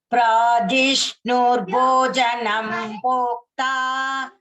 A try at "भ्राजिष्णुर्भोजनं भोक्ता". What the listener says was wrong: भगिनी all महाप्राणास have to be stressed. भ्राजिष्णुर